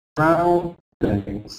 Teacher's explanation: So the sound the vowel sound in in the stressed syllable must be loud. Ow sound must be clear.